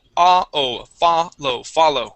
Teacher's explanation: Accent at the beginning or stress at the beginning, and it is ah-o, follow, follow.